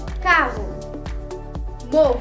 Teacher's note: Double R in Portuguese always takes an H sound.